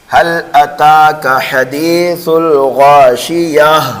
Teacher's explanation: گول تا کو وقف کی حالت میں ہائے ساکنہ سے بدل دیا جاتا ہے۔ اس کو کہتے ہیں وقف بالابدال۔